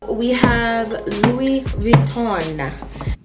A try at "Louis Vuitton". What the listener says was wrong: That is not how you pronounce Louis Vuitton. It's pronounced Louis Vuitton. The N on the end is silent. It's not pronounced.